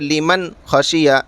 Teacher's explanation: نون کو ظاہر کر کے بغیر گننے کے جلد پڑھیں گے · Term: اظہار